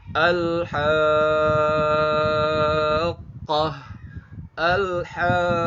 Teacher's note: Ketemu sama qaf yang bertasydid. Maka kalau ada mad ketemu sama huruf yang bertasydid maka panjangnya wajib 6 harokat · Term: mad lazim mutsaqal kalimi